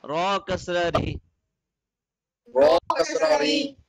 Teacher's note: if ra has a kasra below it, it does not remain heavy anymore. It becomes a light letter.